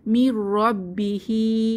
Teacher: নুন সাকিনের পরে র এসেছে তাহলে গুন্নাহ ছাড়া মিলিয়ে পড়বো